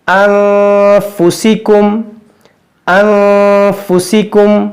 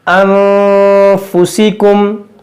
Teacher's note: ہم یہاں پر گننا کر رہے ہیں کیونکہ یہاں پر نون ساکن کے بعد فا ہے، حرف اخفا